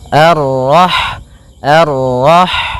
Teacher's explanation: Ha yang berharakat sukun. Dan sifat ha itu yang paling mencolok adalah sifat hamesnya yaitu mengalirnya nafas ketika kita membacanya. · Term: sifat hamsnya